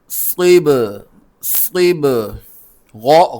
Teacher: صاد کو با کے ساتھ ملانا ہے، صاد سین کی طرح ہی نکلتا ہے دانت ملا کر سیٹی کے ساتھ، لیکن تھوڑا موٹا ہوتا ہے، اور با بلو کلر کا ہے، حروف قلقلہ میں سے ہے، اس پر قلقلہ کریں گے۔